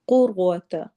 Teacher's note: قوف موٹے حروف میں سے ہے، قوف کو ہم نے موٹا پڑھنا ہے، ساتھ ہی ہم نے را کو بھی موٹا کرنا ہے۔